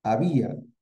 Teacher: la vocal cerrada tiene la mayor fuerza de voz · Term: yato